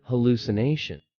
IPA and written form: həˌluːsɪˈneɪʃən (hallucination)